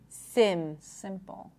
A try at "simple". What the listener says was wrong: raise your tongue even more simple right so you're attempt look at my tongue it is slightly higher than what you're doing right now